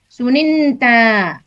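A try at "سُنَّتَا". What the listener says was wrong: Sunnata. Nunnya tidak dipecah. Untuk rumpun 2 ini kan huruf ain dan lam fiilnya menggunakan syiddah. Nah, pada saat tasrif lugoi fiil madhi itu syiddahnya ada yang dipecah, ada yang tetap baki.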